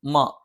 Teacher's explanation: രണ്ട് ചുണ്ട് തുല്യമായി അടച്ചുവെക്കണം